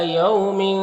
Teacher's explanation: یہاں پر واولین سے نرم آواز کے ساتھ جلد پڑھیں گے